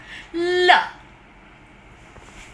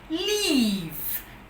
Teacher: when we talk about the lateral lure what happens is that the two articulators are brought in contact but the air still passes out from the sides of the tongue